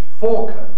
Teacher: the traditional form is actually falcon like talk and chalk with no l